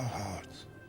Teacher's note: It doesn't have the T. He kind of softens it. It kind of tapers off at the end.